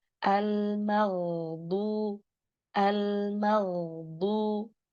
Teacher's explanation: Lalu ada ghain sukun. Gain sukun ini zamannya harus lebih panjang daripada lam sukun.